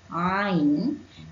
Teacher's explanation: daripada tengah-tengah halqum atau kerongkong